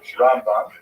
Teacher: Rambam is pronounced with the emphasis on the first syllable